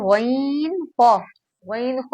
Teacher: गईन ख्वा हलक के ऊपर वाले हिस्से से अदा होता है।